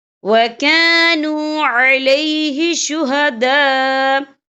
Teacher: یہاں دیکھیں وَكَانُوا عَلَيْهِ شُهَدَاءَ، یہاں خالف سے پہلے زبر ہے اور اس پر مد بھی ہے، یہ مد جو ہے مد متصل ہے، اس کی مقدار 4 حرکت کے برابر ہے، تو ہم اسے 4 حرکت کے برابر کھینچ کے پڑھیں گے